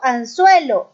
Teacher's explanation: Cuando yo digo anzuelo, esta N es un sonido interdental.